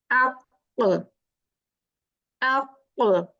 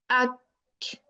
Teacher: your back of the tongue is touching opposite the soft part of the upper palate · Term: qaf